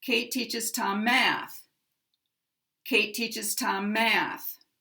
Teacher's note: Now math is the primary stress, the maximum stress, because it's the last stressed word in this sentence.